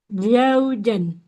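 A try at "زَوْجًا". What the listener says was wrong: jaujan. Zai dulu Z ya. Zaujan. Oke, kalau itu nanti jadi J semua. Jaujan itu jadi jim semua. Za, coba Ibu. Za. Jangan ja. Za. Zau. Zau. Zaujan. Oke, PR di huruf zai dan panjang pendeknya.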